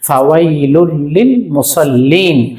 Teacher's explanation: নুন সাকিন এবং তানবিনকে গুন্না ছাড়া মিলাইয়া পড়তে হয় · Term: ঈদগামে বেলাগুন্না